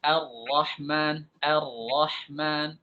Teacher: Nah, takrir yang berlebihan seperti ini dilarang oleh para ulama. Ra itu tidak boleh banyak-banyak takrirnya